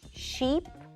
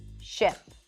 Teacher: the two vowel sounds, the tense E and the lax I, as in sheep versus ship